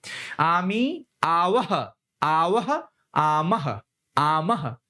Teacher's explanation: विसर्ग कहते हैं और इसका उच्चारण ह के रूप में होता है